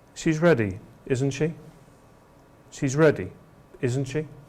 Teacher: we know the answer already so we use a downward pitch